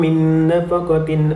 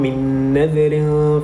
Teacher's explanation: Dan seterusnya pada kalimah min nafaqatin dan pada kalimah min nadhirin terdapat huruf nun bertemu dengan huruf nun merupakan hukum idgham ma'al hunnah dan perlu dibaca dengan dengung 2 harakat